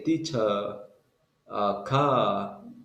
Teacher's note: In British, they don't pronounce the R. They only say teacher, car, Yeah.